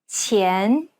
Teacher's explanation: The Chinese Q sound should be pronounced with the tip of the tongue touching the bottom teeth, while the blade of the tongue lays flat behind the front teeth.